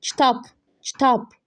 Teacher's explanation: Vurğu deməli A-nın üstündədir.